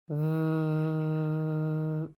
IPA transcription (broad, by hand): v